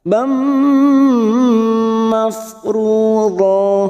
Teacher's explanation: Nasibam, fathah tanwin, fathatain yang bertemu mim namanya idgham bi gunnah, masuk dan mendengung, masuk pada huruf mim dan ditahan selama 3 harokat